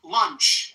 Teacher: And it ends with the unvoiced ch like chop chop.